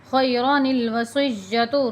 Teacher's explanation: یہ جو را ہے الف کے ساتھ نہیں پڑھی جائے گی، را جلدی پڑھی جائے گی۔